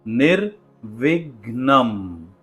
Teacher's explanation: इसमें थोड़ा सा अनुस्वारा यानी नेजल साउंड भी आता है। इसलिए आपको बड़े ही ध्यान से म का जो उच्चारण है वो हल्का सा नेजल करना है।